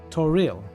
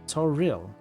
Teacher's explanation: We didn't know Toriel had stress on the second syllable, apparently.